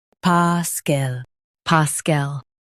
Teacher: Stress pa and keep cool, soft.